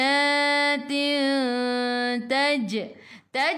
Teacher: qalqalah sughra lantunannya kecil